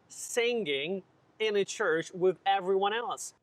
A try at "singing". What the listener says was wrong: We don't pronounce the word singing. There's no g in the middle. It's pronounced singing. There's no hard guh sound. It's in your nose.